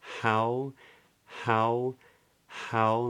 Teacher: how begins with a soft s h it's not strong back of the tongue is is low it's just a little bit of breath